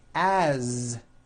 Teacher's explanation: you pronounce it with a voiced Z